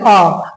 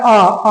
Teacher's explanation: आ हमारे पश्च पीछे वाले भाग से निकल रहा है।